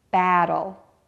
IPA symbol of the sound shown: æ